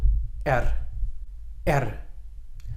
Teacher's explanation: So you can hear it's just a single vibration. You should almost hear your tongue click in the roof of your mouth as you hit that R. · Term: rolling R